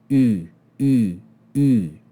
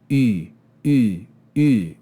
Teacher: E Graika, it means the Greek E, because it's like an E, but we round the lips. U, U, U. And again, you can feel that sound is made in the front of the mouth, on the palate.